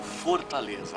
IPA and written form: foʁtaˈlezɐ (Fortaleza)